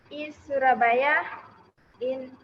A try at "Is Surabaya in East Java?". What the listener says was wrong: Is. Tadi kan saya bilang is kan bacanya. Harus diingat-ingat ya. Is, jangan S. Is Surabaya in East Java.